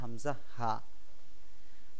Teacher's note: কণ্ঠনালীর শুরু হইতে হামজা হা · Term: এক নাম্বার মাখরাজ